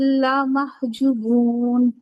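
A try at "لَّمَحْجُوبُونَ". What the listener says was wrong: देखें, ला लंबा किया ना आपने, ला महजूबून, लमहजूबून। नहीं, जूबून वाव मद्दा पूरा करें। अब देखें, लाम को लंबा कर देना मतलब हर्फ ऐड कर देना, जुबून पढ़ना मतलब हर्फ कम कर देना। तो ये दोनों लाने जली होते हैं। लमहजूबून।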